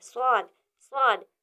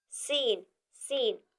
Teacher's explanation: स्वाद को पुर पढ़ेंगे और सीन को बारीक पढ़ेंगे स्वाद स्वाद सीन सीन इसी तरह दद और दाल का भी